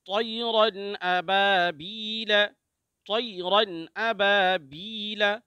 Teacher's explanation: اب با کو کھینچیں گے الف مدہ ہے، بی کو کھینچیں گے یا مدہ ہے۔